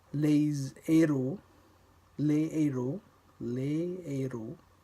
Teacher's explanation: The aspirated H still doesn't make a sound, but it acts like a consonant in that it prevents liaison.